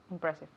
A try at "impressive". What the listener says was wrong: Okay, es un poco cambiado la terminación un poquito. Impressive.